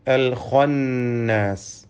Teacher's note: ഇതിലെ ഖാഇന് തഫ്ഖീം നൽകി പെരുപ്പിച്ച് സ്വരഭാരത്തോടെ ഉച്ചരിക്കണം. ഇതല്ലാത്ത മറ്റക്ഷരങ്ങൾക്കൊന്നും തഫ്ഖീം വരാതെ സൂക്ഷിക്കേണ്ടതുമാണ്.